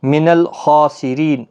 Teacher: خا حروف مستعلیہ کا حرف ہے، اس کے اوپر کھڑا زبر بھی ہے، ایک الف کے برابر کھینچنا بھی ہے، پر بھی پڑھنا ہے. را زیر کی وجہ سے باریک پڑھا جائے گا.